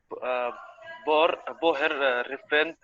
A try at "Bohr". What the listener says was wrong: Not Bohr. He's called Bohr. H silent as it's his name. Okay, Bohr, not Bohr.